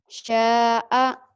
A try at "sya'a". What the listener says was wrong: Sya'a. Mana? Sya'a. Nggak ada yang panjang. Sya'a.